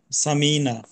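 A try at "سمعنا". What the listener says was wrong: লাস্টেরটা একটু লম্বা করে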